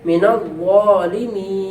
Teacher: وقف کریں گے تو نون سے حرکت ختم ہو جائے گی اور اس کی آواز اور حرف وہ برقرار رہے گا